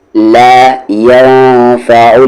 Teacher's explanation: نون ساکن کے بعد فا ہے اخفا ہوگا